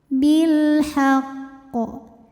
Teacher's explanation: Sebab alif lam menghadapi huruf qamariah yaitu ha. Maka lam sukun dibaca dengan jelas atau disebut dengan izhar qamari. Bilhaqqo. Ketika berhenti di sini hukumnya adalah qalqalah kubra.